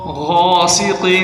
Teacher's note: غاسق، غین کو موٹا کریں، قاف کو بھی موٹا